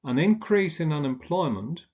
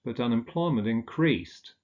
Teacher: So with a noun, the stress falls on the first syllable, with a verb on the second syllable.